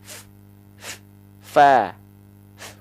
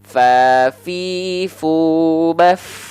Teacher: ujung gigi Sari atas kita nih disentuhkan dengan bibir bawah bagian dalam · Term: huruf Fa